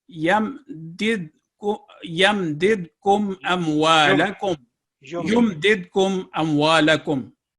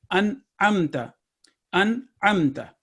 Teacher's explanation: ये इजहार के साथ पढ़ा जाएगा, यानी इसमें बग़ैर गुन्ना के, यानी नेज़ल साउंड नहीं आएगी